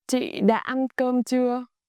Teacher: Chưa keeps it falling tone. Huyền, even though it's a question.